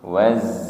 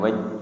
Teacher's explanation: Wattini z ujung lidah berada di antara ruang gigi seri atas dan ruang gigi seri bawah nggih. Kemudian sifatnya adalah sofir, desis nggih.